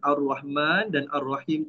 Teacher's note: Jangan jelaskan bunyi lam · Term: alif lam syamsiah